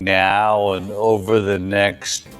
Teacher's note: The word and is generally reduced to a quick n. It's almost like the vowel itself is gone. A schwa. And in this case, you'll even hear the D deleted altogether. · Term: reduced forms